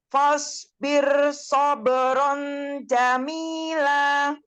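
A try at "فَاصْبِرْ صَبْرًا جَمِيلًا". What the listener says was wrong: Oke, fa-nya lebih tipis sekarang. Fa-nya tipis, shotnya tebal.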